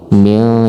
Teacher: nun mati bertemu dengan kaf, ini adalah ikhfa hakiki. Mil, jadi bacanya harus diikhfakan, harus disamar-samarkan dan didengungkan.